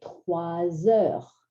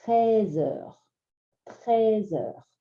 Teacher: So the only way to distinguish these two is wa versus e.